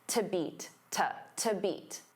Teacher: Now, to beat, because to is a preposition, it becomes unstressed